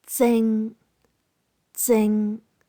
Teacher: Tone 6, low to mid-pitched.